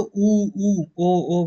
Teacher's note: उ उ ओ ओ बोल रहे हो तो आपका मुंह वृत हो गया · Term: वृताकार